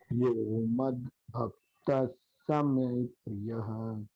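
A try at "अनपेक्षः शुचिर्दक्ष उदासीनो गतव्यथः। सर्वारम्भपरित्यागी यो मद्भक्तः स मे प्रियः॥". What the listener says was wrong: बहुत सुंदर।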